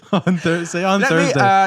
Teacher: they just use an F instead of a TH